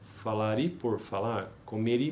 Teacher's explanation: PE, português de Portugal, agrega uma vogal paragógica.